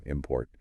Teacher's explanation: You really have to kind of push that second part.